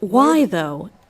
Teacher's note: y actually starts with more of an ooh shape